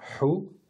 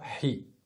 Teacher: On va sortir de l'air, vous savez, c'est un peu comme un enfant en hiver, lorsqu'il se met devant la fenêtre et que dehors il fait froid, il fait sur la fenêtre et il y a de la buée qui arrive. Et la corde vocale ne va pas vibrer, c'est surtout de l'air qui va sortir.